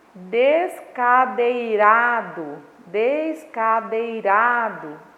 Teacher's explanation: Esse irá aí é a sílaba tônica, é a sílaba mais forte. E como essa sílaba essa sílaba tônica, ela está vindo na penúltima sílaba, ou seja, antes da última, né? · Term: paroxítona